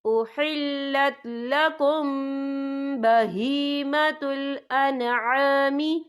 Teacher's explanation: یہاں میم ساکن ہے، میم ساکن کے بعد جو ہے با آ رہا ہے، تو یہاں پر اخفا شفوی ہوگا، تو ہم یہاں غنہ بھی کریں گے